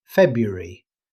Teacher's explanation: most native speakers simply say February, dropping the first R during normal conversation